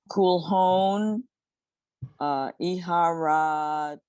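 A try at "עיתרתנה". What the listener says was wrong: Okay, the resh and the tough tet go together. Iharatna.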